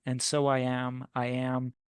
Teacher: And the vowels just kind of merge together. So it sounds almost more like a murmur than any kind of sentence, right? And so I am, I am.